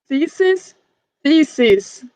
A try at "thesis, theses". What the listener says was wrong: The th is very difficult sound for you guys, I think. Th.